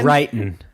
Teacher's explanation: Another thing that they do in the South is the this thing where like when a word ends in ing, they don't pronounce the G